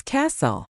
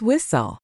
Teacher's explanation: If you see a word ending in TL E, that T is basically invisible.